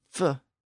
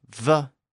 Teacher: and the F and V sounds are another example of this the F sound f is the unvoiced version and the V sound V is the voiced version · unvoiced version and the V sound V is the voiced version the only difference between those two sounds is the fact that the vocal chords are involved in the v sound